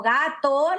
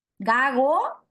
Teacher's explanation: No llega a cerrarse, no llega a cortarse la salida del aire porque la pronuncio, en vez de pronunciar una oclusiva velar, pronuncio una fricativa velar, que se representa con un lacito al revés, ya.